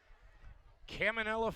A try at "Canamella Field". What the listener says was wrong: Nope. No, there's no M's there in the beginning. It's a Canamella. It's a Canamella, not a not a Caminella. You flipped the M in the end. You said Canamella.